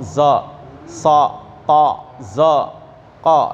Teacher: Jadi adanya di langit-langit atas. Zo, mulut nggak monyong tapi keluar kayak bunyi o.